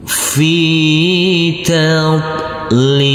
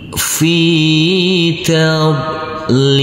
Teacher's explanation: Fi, huruf fa yang berkasroh i, karena bertemu dengan huruf ya sukun, maka huruf fa kita baca panjang dengan panjang 2 harokat. Tab, huruf bod yang bersukun ini tidak boleh dipantulkan karena huruf bod bukan bacaan qalqalah.